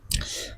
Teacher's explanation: Nah, ini alif lam syamsiyah, maka lamnya di sini tidak terbaca jelas karena di sini alif lam bertemu dengan huruf syamsiyah nun